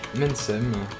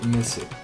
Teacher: le N, le M de l'accusatif disparaît et le N devant le S disparaît